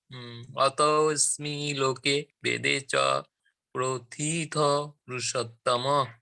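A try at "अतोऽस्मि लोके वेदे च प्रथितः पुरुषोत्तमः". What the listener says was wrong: Perfect. Very nice, Prabhuji.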